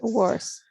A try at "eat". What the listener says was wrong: I only have one comment, okay, related to the verb eat. Okay, because you pronounce it as heat. Yes, you add like a he. Maybe you don't notice it, but it sounds like that. So remember, shouldn't eat, or shouldn't eat. agregarle como, sonaba como shouldn't hit.